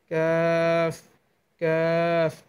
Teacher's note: জিহ্বার গোড়া থেকে একটু আগে বাড়িয়ে তার বরাবর ওপরে তালুর সঙ্গে লাগিয়ে কাফ হরফ উচ্চারণ করবেন।